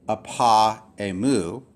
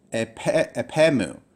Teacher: you would pronounce this together as apemou as if it was one word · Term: elision